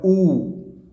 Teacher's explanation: है तो उ देखिए जिसमें सवर्त होता है मुख जो है होठ जो है गोल हो जाते हैं